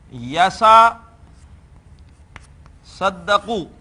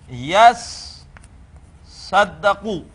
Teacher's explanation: ہم اس باب تفاعل کی تا کو اسی حرف میں بدل دیتے ہیں، تو اس صورت میں بن جائے گا یسا صدقو، تا بدل گئی سواد ہی میں۔ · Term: ادغام